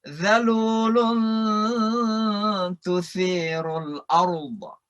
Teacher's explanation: Kemudian ada gunnah. Zalulun ketemu ta. Itu namanya ikhfa lagi.